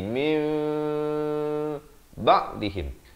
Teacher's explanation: hukum iqlab dibacakan dengan ditukarkan bunyi nun kepada bunyi mim